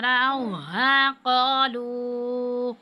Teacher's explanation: اب واو پہ جو ہے مد ہے تو اس کو ہم 5 الف کے برابر کھینچیں گے